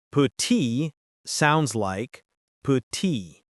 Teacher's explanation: The final T is usually silent.